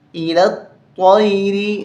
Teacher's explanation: لام کو طا کے ساتھ ملائیں گے، یا الف لام یہ تینوں چھوڑ دیں گے، تین حرف. الی الطیر، طا کو موٹا کرنا ہے، تیری نہیں پڑھنا